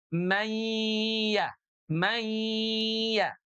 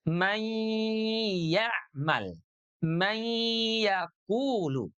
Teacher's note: Nunnya yang semula ada di ujung lidah dengan langit-langit, sekarang ditarik ke tengah lidah. Karena huruf ya-nya keluar dari tengah lidah. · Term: idghamnya